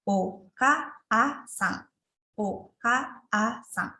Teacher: panjang vokal A ditulis dengan menambahkan huruf A dan dibaca dengan panjang 2 mora. Maksudnya yang mora ini artinya ketukan ya.